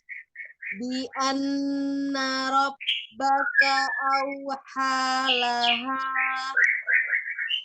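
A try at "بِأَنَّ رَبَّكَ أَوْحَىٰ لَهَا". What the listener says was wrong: Iya masih. Laha masih ada. Laha itu masih kayak ada memanjangkan. Bi anna rabbaka awhalaha.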